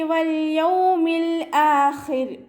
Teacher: വാവ് ഉച്ചരിക്കുന്ന സമയത്ത് ചുണ്ടുകളൊന്ന് വട്ടത്തിൽ പിടിച്ചു കൊടുക്കുക. ലാമ് കൊൽക്കല ലെറ്റർ അല്ലാത്തത് കൊണ്ട് ഹാഫ് സുക്കൂന് കൊടുക്കുക.